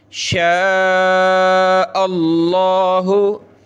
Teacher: لفظ اللہ سے پہلے زبر تو موٹا کر رہا ہوں